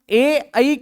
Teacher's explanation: ए ई का स्थान उच्चारण स्थान होता है कंठ प्लस तालू